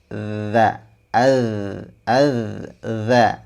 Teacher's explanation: huruf dzal itu makhrajnya ada di bagian ujung lidah kita bertemu dengan ujung gigi seri bagian atas